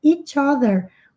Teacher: Como a palavra seguinte começa por som de vogal, naturalmente o som vai emendar.